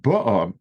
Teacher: meaning she came with the sheep, there the emphasis is on the first vowel